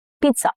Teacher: Okay, it has a little T sound, not Z.